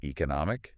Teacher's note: The stress is on no before the ike.